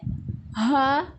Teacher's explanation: اقصی حلق سے یعنی سینے کی طرف والا حصہ